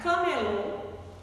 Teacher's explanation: oxítona não é aquela palavrinha em que a última sílaba é a mais forte